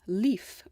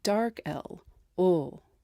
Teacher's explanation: More of the body of the tongue is raised, and it sounds less clear